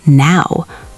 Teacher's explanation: In Australian English, it often becomes now, almost like there's an extra vowel stuck in there.